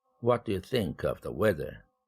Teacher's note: 마지막 내용어 weather 명사가 1강세를 차지했네요